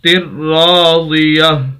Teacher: خاص تبدیلی یہ ہوگی تا کو ہا سے بدلیں گے جب بھی آخر میں تا آ جائے وقف کی حالت میں